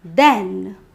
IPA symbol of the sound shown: æ